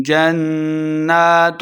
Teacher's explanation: جنات، نون مشددہ غنہ کر کے پڑھیں گے